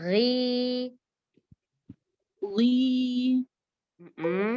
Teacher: Ya, ujung tenggorokan. Titiknya pada akar lidah yang ketemu sama langit-langit lunak sekitar uvula atau sekitar anak lidah. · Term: huruf ghain